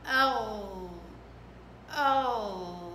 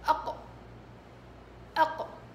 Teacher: الغين رخاوة، القاف شدة، القاف قرع بالشكل هذا، الغين لا، ملامسة ملامسة، تمام.